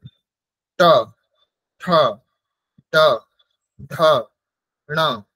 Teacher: যেমন ট, ট বর্ণ উচ্চারণ করতে হলে আমাদের জিহ্বাকে তালুর ঠিক ওপরের অংশে, যেটা মূর্ধা বলছি, সেখানে আমাদের স্পর্শ করতে হবে ট বর্ণ উচ্চারণ করতে হবে। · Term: ট বর্গ